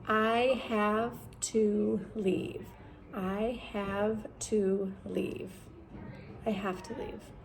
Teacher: our vowels are kind of fading into the background, and when they fade into the background, a lot of times they sound like the schwa, which is just the uh.